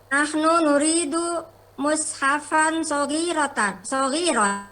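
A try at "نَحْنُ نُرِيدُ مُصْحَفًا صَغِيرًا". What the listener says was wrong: Ahsan.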